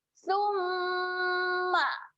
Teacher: waktu kita sebut huruf sa tu kena jelirkan lidah. Kemudian baru kita dengung 2 harakat.